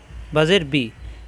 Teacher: বায় জের আসলে বি হবে, বে হবে না।